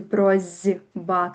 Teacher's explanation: С глухі, Б звонкі. Будзе барацьба, стане 2 звонкіх. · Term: Асіміляцыя бывае па звонкасці